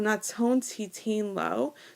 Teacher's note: the nun, right, got assimilated, got squished between two consonants, right? So it gets a dagesh in the next letter.